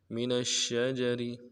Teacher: نون کو شین کے ساتھ ملانا ہے، شین کے اوپر تشدید زور دیں گے، جیم کو نرم سے ادا کریں گے، را کو باریک ادا کریں گے.